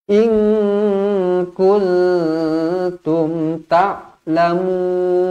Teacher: Dzalikum khairul lakum in kuntum. Nun kosong bertemu dengan kaf, nun kosong bertemu dengan ta, ikhfa hakiki, dengung dua harokat.